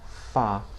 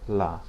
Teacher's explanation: If you listen to fala, the two a sounds are not the same. The first is open fa. The second is closed la fala. Okay? And sometimes like in the word distancia, the closed a is indicated with a circumflexed accent.